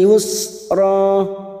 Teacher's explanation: ra fathatain yang dibaca waqaf mat iwad 2 harokat kita panjangkan